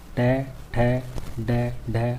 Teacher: ट वर्ग मूर्धन्य वर्ग, ट, ठ, ड, ढ, अण, मुंह के अंदर जीभ ऊपरी हिस्से का अगला भाग छूती है